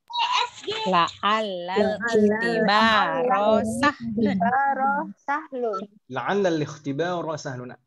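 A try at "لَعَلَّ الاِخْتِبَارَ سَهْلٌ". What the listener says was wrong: Al-ikhtibar hamzahnya hamzah wasal ya. Tidak perlu dibaca. Tayib, la'al-ikhtibar sahlun.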